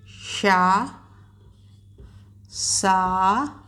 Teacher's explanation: श का उच्चारण स्थान तालु होता है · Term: तालव्य व्यंजन